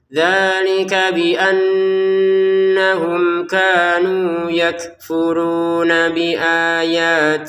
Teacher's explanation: nun bertasydidnya kita dengungkan ya